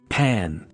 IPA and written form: pæn (pan)